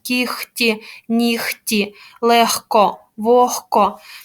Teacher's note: г у нас оглушується перед глухими приголосними звуками